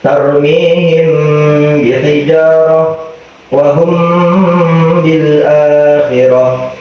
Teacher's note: Yang kedua ada ikhfa syafawi, yaitu mim mati bertemu dengan ba yang berharokat, maka mimnya harus dibaca dengung juga selama 2 harokat